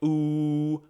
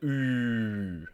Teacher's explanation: The normal U is pronounced like ooh, while the U with the dots is more of a rounded ooh.